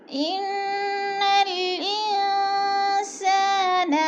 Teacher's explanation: والعصر، ان کی نون مشدد ہے، یعنی اوپر شد ہے، شد کا دوسرا نام مشدد ہے، اور غنہ کریں گے یعنی ناک میں آواز لے جائیں گے تھوڑا سا رک کے۔